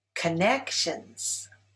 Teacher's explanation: Connections is stressed on the second syllable.